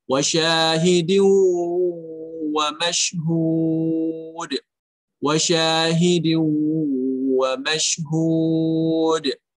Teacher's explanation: Di setelah huruf shin ada huruf mad, yaitu alif. Tidak ada sebab lain setelahnya sehingga dia dibaca 2 harokat. Tidak boleh lebih dari 2 harokat.